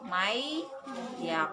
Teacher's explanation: Jadi harus mayyaqulu. Ditahan sebentar 3 harokat baru masuk ke huruf ya. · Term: idgham bigunah